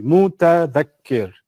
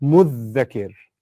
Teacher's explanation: the ta and the dha are similar. So what the Arabs do is they fuse them and they say there's an easier version of it, muddhakir, which is a shadda on the dhal.